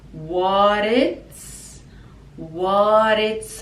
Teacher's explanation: so what becomes like a d sound